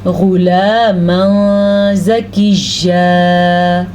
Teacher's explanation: تنوین کے بعد زا آ جائے تو بھی اخفا ہوگا، یعنی کہ تنوین کی آواز کو ہم چھپا کے پڑھیں گے